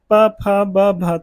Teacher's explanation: तो ओंठ आपस में मिलते हैं, इसलिए ये ओष्ठ वर्ण होते हैं